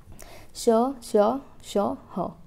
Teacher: घर्षण या रगड़ करके वो मुंह से बाहर निकले वो ध्वनि तो उसे ही हम क्या बोलेंगे उष्म व्यंजन बोलेंगे